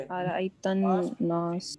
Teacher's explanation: नून के ऊपर गुन्ना है क्योंकि उस पर तशदीद है